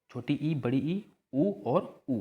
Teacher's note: संव्रत किसे कहते हैं, तो उच्चारण में क्या होता है, जब मुख द्वार क्या होता है, सकरा हो जाता है, मतलब बोलने में क्या हो जाता है, सकरा हो जाता है, पतला।